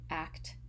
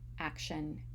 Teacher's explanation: the t in action sounds like a sh sound